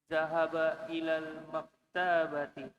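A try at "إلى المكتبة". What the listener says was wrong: Taknya pendek di sini. Maktabati.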